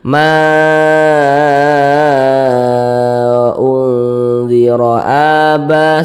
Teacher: Mad Jaiz munfasil panjangnya boleh empat harakat boleh juga 5 harakat jadi kita panjangkan lebih panjang daripada Mad thii Ma unziro aba